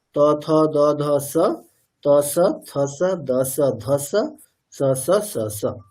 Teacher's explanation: ত বর্গের হচ্ছে উচ্চারণ স্থান দন্ত। তাহলে ত বর্গের সাহায্য নিয়ে দন্তেশ্বরের উচ্চারণ করতে হবে।